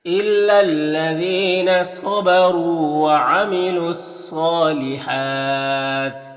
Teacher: صاد میں کھڑا زبر ہے، 1 الف کے برابر کھینچیں گے، ہا میں بھی کھڑا زبر ہے، اور یہاں پر وقف کریں گے تو تا کا زیر سکون سے بدل جائے گا، تو پھر مد عارض وقفی ہوگا · صاد حروف مستعلیہ میں سے پر پڑھیں گے، را کو پر پیش اور را کو پر پڑھیں گے، یہاں پر واو مدہ ہے، 1 الف کے برابر کھینچیں گے، الف کو نہیں پڑھیں گے۔